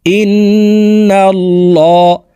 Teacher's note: উচ্চারণ করে পড়বো হামজাহ নুন জের ইন নুন লাম জবর নাল মোটা করে পড়তে হবে আল্লাহ শব্দের আগের হরফে জবর আছে